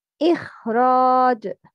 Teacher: Complete تفخيم should be applied to letter خا. Although it has sukun and is followed by kasra, the fact that's followed by letter ra strengthen its level of tafkhim.